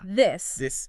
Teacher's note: you add a vibration in your throat. Vibration. You should feel a little buzz.